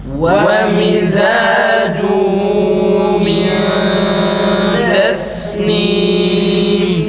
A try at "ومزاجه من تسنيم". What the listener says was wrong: Mimin sesi çıkıyor arkadaşlar. Ve mizacuhu değil. Ve mizacuhu. Tekrar dudağımızı geri çekiyoruz.